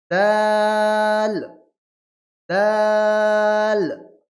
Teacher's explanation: ওইরকম ভাবে দা, তা, দাল, ত, তা, দা, ত, তা, দা, ত, 3টি অক্ষর উচ্চারিত হবে। একই মাখরাজ, জিহ্বার আগা, সামনের উপরে দুই দাঁতের গোড়া।